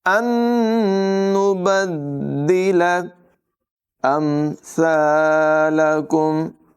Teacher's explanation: ان نبدل، یہاں پر نون ساکن کے بعد ایک اور نون ہے حروف جر معلول میں سے، ادغام ہوگا یعنی غنہ کر کے ملا کر پڑھیں گے. دال میں ذرا رک کر جماؤں کے ساتھ ادائیگی کریں گے